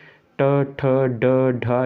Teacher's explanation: ये मूर्धन्य वर्ण है। मूर्धन्य का मतलब मूर्धा का इसमें यूज हो रहा है, इसको हम मूर्धन्य वर्ण भी कहते हैं, ये भी आपको याद रखना है, इसका उच्चारण मूर्धा से होता है।